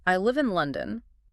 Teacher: The pitch drops on London. · The first is the staircase which goes down in pitch at the end. You use this for basic statements and why questions.